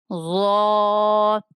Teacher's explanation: زبان کی نوک اور ثنایا علیہ کا سرا ضا کا مخرج ہے، پر کر کے پڑھیں گے۔